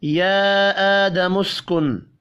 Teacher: یا کے اوپر چھوٹی مد ہے، 3 الف کے برابر کھینچ کر پڑھیں گے۔